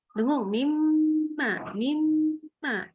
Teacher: Nun sukun ketemu mim kan idgham. Nah, dengung ya.